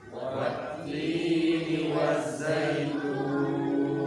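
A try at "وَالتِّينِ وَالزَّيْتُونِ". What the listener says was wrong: Ingat bau sifatnya layyin, jangan sampai membaca wat. Ya, karena dia tasydid, kemarin kau bacanya apa? Qamariyah atau syamsiyah? Syamsiyah. Jangan dibaca wat, wawunya hilang, layyinnya harus maju dulu. Wat-tini waz-zaitun.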